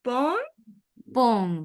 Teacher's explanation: tenés que pronunciar en O nasal. La T final no se pronuncia.